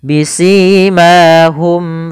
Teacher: mim mati bertemu dengan huruf Fa maka ini kita namakan dengan bacaan izhar syafawi yaitu suara huruf mim dibaca dengan jelas